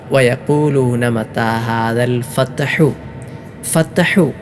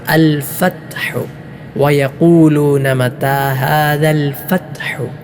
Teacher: ഒട്ടുമിക്ക ആൾക്കാരും അൽ ഫത്ഹു വയഖൂലൂന മതാ ഹാദൽ ഫത്ഹു എന്നതിലെ ഫത്ഹു എന്ന പദം ഖൽഖലയോടുകൂടെ ചലനശബ്ദത്തോടുകൂടെയാണ് ഓതാറുള്ളത്